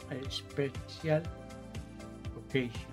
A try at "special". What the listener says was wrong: La CI, la I es muda. No digo special, no, es special.